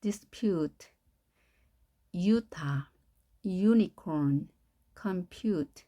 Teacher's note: 자, 하나의 소리가 U에 있는데 dispute, Utah, unicorn, compute, U 발음이 나는데요. 이때는 앞에 J가 딸려 들어가면서 발음이 되는 겁니다. U. 자, Ju지만 U.